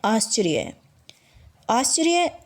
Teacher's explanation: आश्चर्य, अब देखिए यहाँ र स्वर के बिना है, यानी र ह्रस्व है, र की आवाज़ बहुत ही कम आ रही है, इसलिए हम र को शिरोरेखा के ऊपर लगाएंगे।